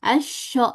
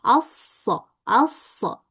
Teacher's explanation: huruf shad itu dia sifatnya berdesis atau safir.